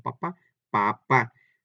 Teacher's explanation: estas palabras que acabamos de decir llevan acento en la última A. Lo primero que les estoy comentando y demostrando es que tienen dos sílabas, ¿sí?